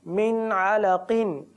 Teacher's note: क़ाफ हुरूफ़ मुस्तालिया में से ज़रूर है, पुर भी पढ़ना है, लेकिन इतना भी पुर ना पढ़ें कि क़ाफ जो है वो उसकी अदायगी बिगड़ जाए। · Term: क़ाफ की अदायगी